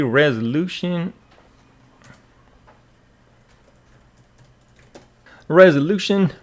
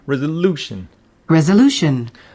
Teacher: resolution with the stress on the third syllable